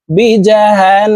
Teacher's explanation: গুন্নাটি তিন সেকেন্ড পরিমাণ ধরে রাখি